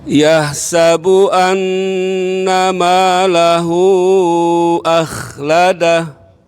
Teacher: Tinggal kho-nya Ustaz agak ditebalkan. Suaranya ke atas.